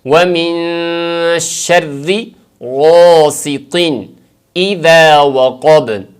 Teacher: آگے وقب میں قوف اور با پہ قلقلہ کے ساتھ وقف ہوگا